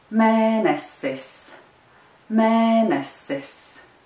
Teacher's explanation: The accent is on the first syllable of the word mēnesis.